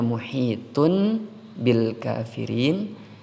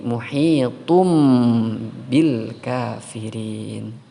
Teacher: bertemu dengan huruf ba maka harus dibaca iqlab iqlab artinya mengganti mengganti suara tanwin atau nun mati kepada seperti Huruf mim